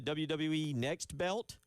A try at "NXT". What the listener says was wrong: You said You said next. It's NXT.